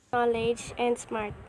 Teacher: The learner omitted the s sound in the word smarts